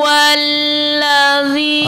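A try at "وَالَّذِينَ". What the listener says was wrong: Ah, jangan wallah, bukan wallah. Walla. Kurang buka mulutnya. Walla. Walla. La, la, la.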